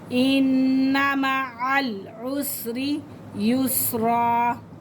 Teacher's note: रा के नीचे ज़ेर है तो इसे बारीक पढ़ेंगे